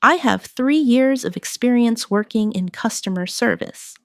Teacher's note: Emphasize 3 years and customer service to highlight your strengths.